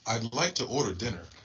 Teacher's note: sounds like a general American speaker, so there's some rhoticity here.